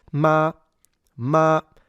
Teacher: even though it's supposed to be a high pitch flat tone, it doesn't have to be the exact pitch